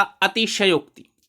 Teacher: उच्चारण का खास ही ध्यान रखिए, शय पर दबाव डालिए